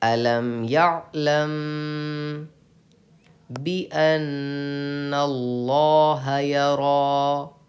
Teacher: میم ساکن کے بعد با آئے تو غنہ کے ساتھ اخفا ہوگا. اخفاء شفوی کا قاعدہ ہے، اسی لیے آپ کو یہاں غنہ کر کے پڑھنا ہے.